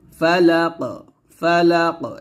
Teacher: কফটা কলকলা করতে হবে আর কলকলা করলে এরকম ভাবে কলকলা করব